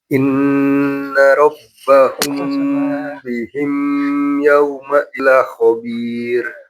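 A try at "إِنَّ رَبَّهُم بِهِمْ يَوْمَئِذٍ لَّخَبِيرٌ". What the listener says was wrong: Oke, yang bihim, mim ketemu sama ya, dia tidak ditahan. Ciri-ciri mim yang ditahan itu kalau nggak ada harokatnya aja. Rabbahum nggak ada harokatnya kan. Kalau yang mim ketemu ya, dia izhar syafawi. Jadi nggak perlu ditahan.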